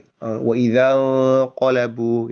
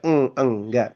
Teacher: ketika huruf nun sukun atau tanwin bertemu dengan huruf qof itu nanti bacaan ikhfanya nanti menjadi bunyi eng